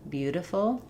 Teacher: The reason I write it with a D is that it's a voiced sound. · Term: flap